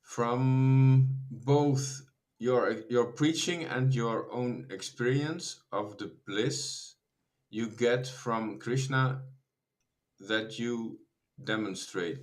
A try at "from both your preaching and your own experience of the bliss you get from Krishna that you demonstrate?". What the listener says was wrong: Is that a question? You have a question mark, but you're not saying it like a question.